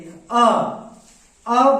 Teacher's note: अ बोलते हैं तो होठ गोलाकार नहीं हो रहा है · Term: आवृतमुखी